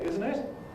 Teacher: we’ve allowed people to omit the first [t] and say [ˈɪzn̩ ɪt], certainly found in one style of RP